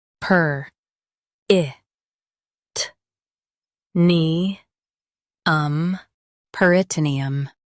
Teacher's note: Stress nee and keep um soft.